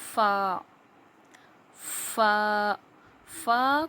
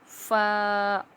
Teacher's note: فا لیٹر کے نکلنے کی جگہ کے سامنے کے دو دانتوں کے کنارے جب نیچے زبان کے یعنی کہ جو نیچے ہمارے ہونٹ ہیں، ہونٹ کے تری والے حصے سے جب لگتے ہیں، سامنے کے دانتوں کے کنارے جب نیچے ہونٹ کے تری والے حصے سے لگتے ہیں تو فا ادا ہوتا ہے